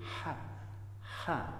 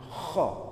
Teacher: Jadi gampangannya untuk membedakan antara ha dengan kho adalah kalau ha itu tipis dan bersih, kalau kho itu tebal dan agak kotor. Maksudnya kotor itu ada ngorok-ngoroknya seperti tadi.